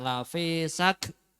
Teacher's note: ulangi untuk kafnya hamasnya dikeluarkan lafisak ya